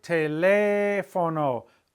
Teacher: when we say teléfono, I'm stressing the E and it's 3 vowels back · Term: stressed 3 vowels back